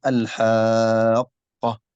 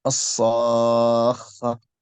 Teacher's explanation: هذا اسمه المد اللازم الكلمي المثقل لأنه مضغم مشدد